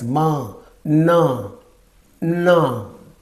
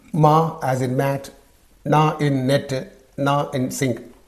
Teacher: the air flow is completely blocked in the mouth but it passes through the nose because the veum soft palet is lowed veum means the back